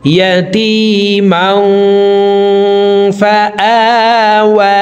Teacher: এই তানউইনওয়ালা মিমটি নাকের ভিতরে লুকাইয়া গুন্নার সহিত পড়ব। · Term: ইকফা গুন্না